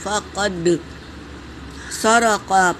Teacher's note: دال پر سکون ہے تو اسے پہلے والے حرف سے ملا کر پڑھیں گے اور یہ قلقلہ ہے۔ فقد سرق پورے حرکت ہے، جل پڑھیں گے۔